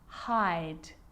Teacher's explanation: the e at the end although it's not pronounced is affecting the vowel sound before it it makes it longer